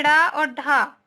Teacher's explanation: ढा का उच्चारण करने में वायु जीभ से टकराकर वापस आती है, फिर बाहर निकलती है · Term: उत्क्षिप्त व्यंजन